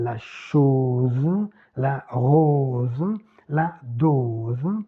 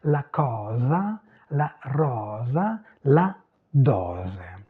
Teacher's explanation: Fermé en français, en position absolue, et avec le Z final, la chose, la rose, la dose. En italien, dans ce cas-là, c'est ouvert.